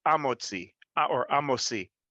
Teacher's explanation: the Sephardim, specifically Ladino speaking, when it comes to the He Hayediyah before Hamotzi, they would never pronounce the He. It would be Amotzi or Amosi.